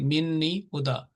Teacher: اگر آپ نے سانس توڑ کے وقف کرنا ہے، تو یہ ہدن ہدا بن جائے گا